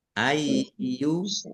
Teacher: ayyu yaknya dibaca double ya. Ada tasdidnya, dibaca ai dulu.